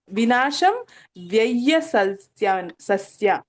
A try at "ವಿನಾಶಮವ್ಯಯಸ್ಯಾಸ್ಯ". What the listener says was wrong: ಇಲ್ಲ, ವಿನಾಶಂ ಆದ್ಮೇಲೆ ಅಲ್ಲಿ ಅ ಹಚ್ಬೇಕು. ವಿನಾಶಂ ಯಾವಾಗ ಬಿಡಿಸುವಾಗ ಅಲ್ಲಿ ಅ ಹಚ್ಬೇಕು ಮ ಆದ್ಮೇಲೆ. ವಿನಾಶಂ ಅವ್ಯಯಸ್ಯಾಸ್ಯ.